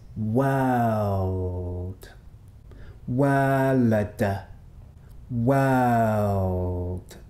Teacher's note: it contains what linguists call a dark L. The dark L is like this, not like this, L.